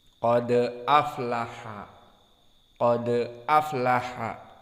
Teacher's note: Wadal huna muraqqaqah walakin dal min huruf al-qalqalah, dan di sini karena dia disukunkan maka dia adalah qalqalah sughra di saat muttasil